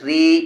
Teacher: زیر ہے، اس لیے یا مدہ ہوگی، یا مدہ کو ایک الف کے برابر کھینچ کر پڑھیں گے